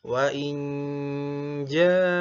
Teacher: Wa inja pastikan dengungnya tiga ketukan ya. Jadi setiap dengung, setiap gunah pastikan jangan terlalu cepat maka pastikan semuanya konsisten tiga ketukan.